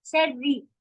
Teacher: رو تو हैवी होता है, रू भी हैवी होता है, लेकिन री कसरा के साथ अगर हो तो हैवी नहीं होता है